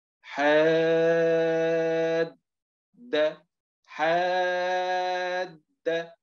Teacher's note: لا توجد قلقله الا على الدال الثانيه اذا وقفنا لكن اذا وصلنا لا توجد قلقله نهائيا